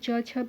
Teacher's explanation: जब आप बोलोगे तो आपका जीभ तालु से टकराएगा। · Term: च वर्ग